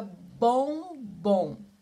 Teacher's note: vai ter a letra M ou a letra N, que vai dar uma força maior na vogal, que vai modificar o sonzinho da vogal. Mas que o som do M e do N não vão aparecer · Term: dígrafos vocálicos